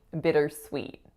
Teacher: The first vowel is a lax I sound.